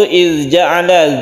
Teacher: zalnya tidak qalqalah karena ada titiknya, jadi usahakan tidak memantul